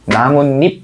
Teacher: 그래서 얘랑 얘가 최종적으로는 이렇게 발음이 돼요. 무 하고서 문으로 바뀌고요. 입 같은 경우에는 립으로 바뀌겠지. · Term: 니은 첨가